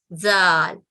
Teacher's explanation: زال دال کی طرح زبان کے اگلے حصے کو دانتوں سے جوڑتے ہوئے ادا کیا جاتا ہے